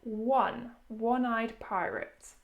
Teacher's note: the sound is as if there is a w there